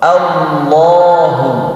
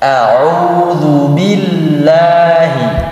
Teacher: Kapan lam dibaca tebal? Ketika dia di lafaz Allah. Allah itu lebih tebal. Allahu. Dan ketika lafaz Allah juga yang dibaca O, bukan yang dibaca A.